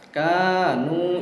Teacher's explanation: mat asli, yang panjangnya 1 alif 2 harokat